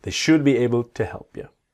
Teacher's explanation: the L in should is silent